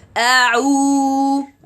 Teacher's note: so I have to close the two vocal cords then open it